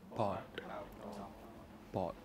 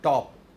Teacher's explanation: When you say pot, both your lips part, but when you say top, both your lips stay shut tight.